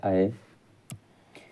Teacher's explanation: अय के उच्चारण में कंठ और तालु की सहायता ली जाती है। तो कंठ तालु की सहायता ली जाती है।